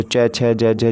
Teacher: च, छ, ज, झ जो हो जाते हैं हमारे तालव्य व्यंजन हो जाते हैं